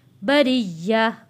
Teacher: یا کو سختی سے پڑھیں گے، یا کے اوپر تشدید ہے، بریہ۔ اولئک ہم خیر البریہ۔